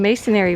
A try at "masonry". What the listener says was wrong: Masonry. There's only one A in masonry. Masonry.